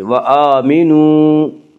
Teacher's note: وہ واو جو ساکن ہو اور اس سے پہلے پیش ہو، واو مدہ کو ایک الف کے برابر کھینچ کر پڑھیں گے